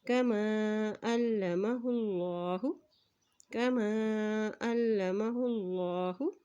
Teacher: अल्लाह के नाम से पहले पेश आ गया है तो अल्लाह का नाम मोटा अदा किया करेंगे